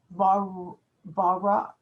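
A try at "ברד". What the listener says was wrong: Barad. Rad. And you have to hear the dalet at the end. Barad.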